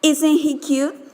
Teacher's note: Low rise. A speaker has a question and wants to know the answer.